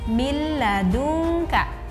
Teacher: Hanya dimasukkan saja nun mati kepada huruf lam ini. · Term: diidghamkan